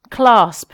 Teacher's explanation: So it starts with quite a hard C sound, a uvular plosive. It ends with a bilabial plosive, and it's got quite an uncomfortable sibilance in the middle of the word.